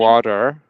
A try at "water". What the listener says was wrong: Excellent.